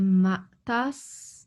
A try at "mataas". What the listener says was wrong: Mataas. Okay, you have to pronounce all the vowels.